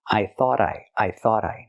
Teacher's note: We hear the T in thought at the end pronounced as a fast D because it's between vowels phonetically.